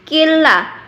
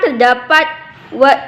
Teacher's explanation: nun mati berjumpa dengan lam, yaitu idgham bila gunnah, tidak berdengung